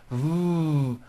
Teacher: a v sound V where you are like biting down on your lower lip